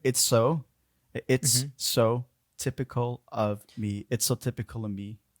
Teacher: the of will become just a schwa sound, and then we have the L from typical linking onto that schwa sound